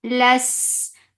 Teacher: sin will get sifa of raqawa and safir, and it is light. So there should be a whistle sound here too.